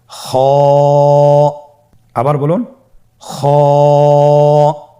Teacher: খ হরফটির মাখরাজ হলো কন্ঠনালীর শেষ ভাগ হতে উচ্চারণ করতে হয়। কন্ঠনালীর শেষ ভাগ।